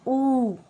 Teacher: ये ओष्ठे कहलाते हैं, जिसका उच्चारण स्थान ओष्ठ मतलब होठ, जो होठ होते हैं ना। जैसे आप बोलना ऊ, तो हमारे जो होठ है वो गोल गोल राउंड में आकृति बना लेते हैं। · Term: ओष्ठ उच्चारण